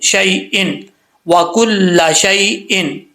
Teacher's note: اب وکل شیئن کے آگے جو یا ہے شی شین کے آگے یا شین زبر یا شی یہ یا لین ہے یا مدہ نہیں ہے. اس کو لمبا نہیں کرنا اس کو صرف شین یا زبر شین زبر یا شی ٹھیک ہے.